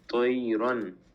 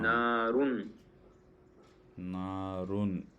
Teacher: اظہار یعنی کہ نون کو ظاہر کر کے بغیر غنہ کے جلد پڑھیں گے